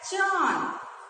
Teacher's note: जब हम चांद का उच्चारण करते हैं, चांद को बोलते हैं, तो यहाँ हमारे मुंह और नाक दोनों से हवा निकलती है, दोनों से उसका उच्चारण होता है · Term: अनुनासिक